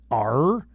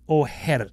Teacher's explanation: You flip it, it almost sounds like a D. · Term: flipped R